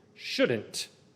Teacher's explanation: shouldn't hit that t sound at the end